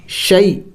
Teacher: ساکن سے پہلے زبر ہے جسے حروف لین کہتے ہیں، ان کو جلد پڑھنا ہوتا ہے